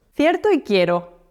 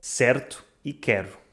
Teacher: Agora quero falar sobre dois ditongos espanhóis que normalmente correspondem a uma só vogal portuguesa e dois ditongos portugueses que normalmente correspondem a uma só vogal espanhola.